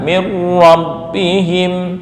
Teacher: nun mati bertemu ro idgham bila gunah